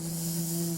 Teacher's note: 자, 동시에 성대는 하고 울리고 있어요. 그래서 떨리는 소리 세는 소리의 특징과 울리는 소리의 특징을 모두 갖춘 떨리는 소리 z입니다.